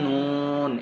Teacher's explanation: 9 নম্বর মাখরাজ জিহ্বার আগা তার বরাবর উপরে তালের সঙ্গে লাগাইয়া